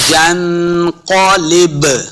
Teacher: कॉफ हुरूफ मुस्तालिया से भी है, इसको मोटा पढ़ना है